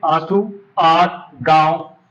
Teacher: नाक और मुख दोनों से ही वायु निकलती है लेकिन नाक की अपेक्षा मुख से वायु अधिक निकलती है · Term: अनुनासिक